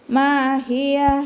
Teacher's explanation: മീമിൻ്റെ കൂടെ അലിഫ് മദ് വന്നു, 2 കൗണ്ട് നീട്ടിക്കൊടുക്കുക